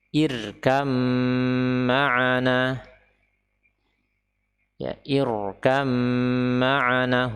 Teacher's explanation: Huruf ra di sini dibaca tebal, ya, dibaca tebal